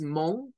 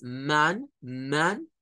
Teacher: es un sonido que es entre una A y una U, no es mon, no es mon, no es una O, es man, man, y luego se agrega el day, Monday, Monday.